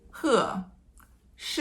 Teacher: It's a high falling tone like he, she.